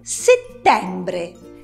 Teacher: si dice settembre con la e aperta